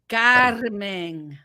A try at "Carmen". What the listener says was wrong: roll the R's.